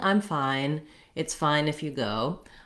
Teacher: That's the same as the letter name I, or I as in the pronoun I am. And I just glides from an ah to an I rapidly in our speech. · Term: the diphthong I